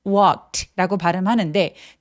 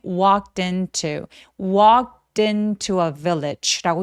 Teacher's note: 그래서 walked 아니고 walked라고 소리 내주시고 walk처럼 크 소리는 무성음이라고 하는데 성대가 울리지 않는 소리죠. 울리지 않는 요 소리로 끝났을 때 동사 원형에 ed가 붙으면 내 눈에 아무리 e가 보이더라고 하더라도 통째로 t로 발음을 합니다.